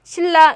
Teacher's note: 신라 역시 뒤의 영향으로 앞에 있는 니은이 리을로 바뀌었고요. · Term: 역행동화